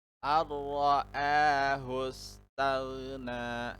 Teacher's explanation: maka hukum bacaan adalah idgham bila gunnah, dimasukkan tapi tanpa mendengung.